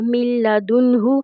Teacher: تو ہم نے میم کو لام کے ساتھ ملایا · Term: ادغام بغیر الغنہ